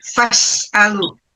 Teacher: Kalau bisa tip in general, ya, jangan ini lafaz dari sin itu mati itu ya harus ada berdesisnya